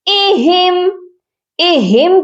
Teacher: تو یہاں پر حمزہ کا ساؤنڈ الگ آنا چاہیے اور ہا کا الگ آنا چاہیے۔ اہم، اہم کے بعد اس ہا کو ہم نے میم مشدد کے ساتھ ملانا ہے۔